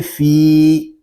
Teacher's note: لام زیر لی خالی، دال یا زیر دی خالدی، نون زبر نا خالدین، فا یا زیر فی، فا کو ہم ایک الف تک کھینچ کر پڑھیں گے کیونکہ یہاں پہ یا مدہ ہو رہا ہے